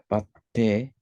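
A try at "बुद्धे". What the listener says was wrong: No, there is letter and there is some matra also. There is ba and ba, there is ukar matra is added here.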